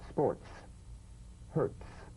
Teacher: s now put it together use a crisp light staccato treatment you have a crisp percussive hiss between the tip of the tongue and the teeth